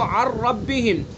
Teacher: پہلا حرف جو ہے نون بالکل سائلنٹ ہو گیا، بالکل حذف ہو گیا، کوئی صفت اس کی باقی نہیں رہی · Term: ادغام تام